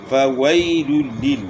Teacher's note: فَوَيْلٌ لِّل، یہاں جو ہے نا یائلین ہے، وہ یا ساکن سے پہلے زبر ہے، یائلین ہے، نرمی سے اس کو پڑھنا ہے. اور یہاں 2 پیش کی تنوین کے بعد حروف یرملون میں سے لام آ گیا ہے تو یہاں ادغام بلا غنہ ہے